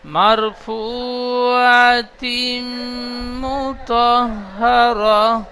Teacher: ফা উপেশ ফু, এটি ও মাদ্দা, এখানে টান দেবেন, হারাকাতে টান হবে না।